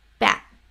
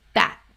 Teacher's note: the end it's held so it's called a held tea and it's like you're about to make the tea but you don't let out the puff of air